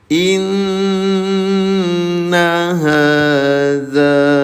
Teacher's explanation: Inna tahan dua ketukan atau dua harakat. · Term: dengung